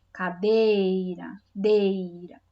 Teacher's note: Então, dei é a sílaba tônica